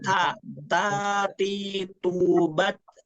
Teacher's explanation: memiliki sifat HAM itu ada hembusan nafas